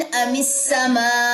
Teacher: वक्फ करते हुए हमजा के ऊपर वाला जो पेश है वो ड्रॉप हो जाएगा